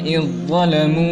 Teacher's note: makhrajnya sama tetapi sifatnya berbeda karena dha itu lebih tebal